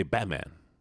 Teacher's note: because of a glottal stop, which is a part of the English language, you say Batman. The T's gone.